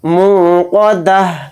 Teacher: حالت وقف میں، تا کی جگہ ہا آواز نکلے گی یعنی ہا ساکن